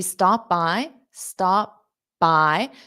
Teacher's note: So don't pronounce that p because then it causes a pause.